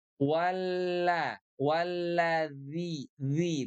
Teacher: huruf zal itu makhrajnya itu berasal dari ujung lidah kita ya, bersentuhan dengan gigi seri atas. Nah, oke.